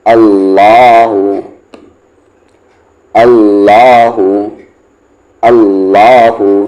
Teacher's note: لام جلالہ سے پہلے والے حرف پر زبر ہے تو یہ بھی ہیوی ہوگا